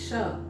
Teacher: श उच्चारण करके देखिए, जीभ उठ करके पीछे जा रहा है, तालु के पीछे उसको स्पर्श कर रहा है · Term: मूर्धन्य